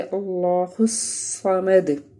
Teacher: آگے صاد ہے، حروف صفیریہ کا لفظ ہے، اس کو پڑھتے ہوئے ہم اس کو موٹا پڑھنا ہے اور سیٹی کی آواز بھی آپ کو فیل ہونی چاہیے